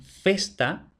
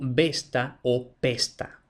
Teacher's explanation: Así, por ejemplo, en latín festa lo encontramos como besta o pesta, es decir, el vasco no disponía de f, que es una labiodental, y por tanto la sustituía por consonantes parecidas que sí tenía, la P o la B, que son bilabiales